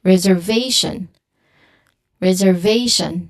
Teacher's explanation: Now the stress here it falls on the third syllable which is on v reservation.